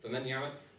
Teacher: for the idgham with ghunna, we're supposed to hear a sound coming out of the nose because the ghunna is basically a sound coming out of the nose.